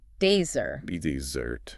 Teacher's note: if you want that sweet reward, dessert, the stress is on the second syllable